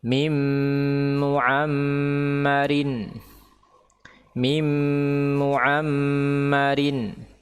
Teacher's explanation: seharusnya hidung ini bergetar atau suara itu melewati hidung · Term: ghunah